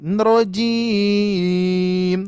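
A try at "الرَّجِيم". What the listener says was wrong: Turun lagi Bu satu yang tadi. Rojim.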